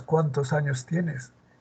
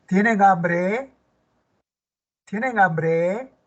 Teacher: si empieza con un pronombre interrogativo, qué, quién, cuál, dónde, cuándo, cómo, etcétera, es interrogativa pronominal y el tonema es descendente.